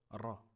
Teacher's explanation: Ça ressemble au R, mais c'est le ra se prononce au bout de la langue